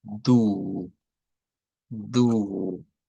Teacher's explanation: que es una U larga, como la del español